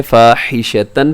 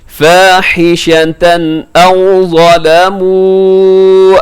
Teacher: تنوین کے بعد حمزہ آ گیا تو آپ نے یہاں اظہار کرنا ہے، مطلب غنہ نہیں کرنا، اس کو تیزی سے پڑھنا ہے.